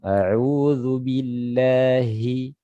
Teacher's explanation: Jadi H itu keluarnya dari tenggorokan paling dalam.